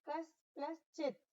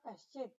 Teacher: दंत स के पश्चात चवर्ग का अक्षर आया है इसलिए दंत स तालव्य श में परिवर्तित हो जाएगा, तो शब्द बनेगा कश्चित।